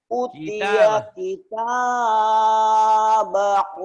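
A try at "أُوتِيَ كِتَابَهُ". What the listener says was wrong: Jangan kepanjangan, satu alif aja. Jangan kepanjangan, cuma satu alif dua ketukan. Utia kita bahu biyaminihi fayakulu. O-nya panjang.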